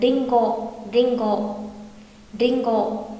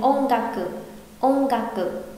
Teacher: Đôi khi chữ N sẽ được đọc thành ng khi đứng trước hàng g hoặc k.